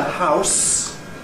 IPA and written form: haʊs (house)